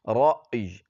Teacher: یا پر وقف کرتے ہوئے یا کو بھی پڑھنا ہے ہم نے